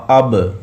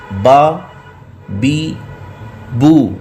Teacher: جب اب کریں گے تو دیکھیں دونوں ہونٹوں کی جو تر حصے ہیں وہ آپس میں مل رہے ہیں۔ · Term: حرف با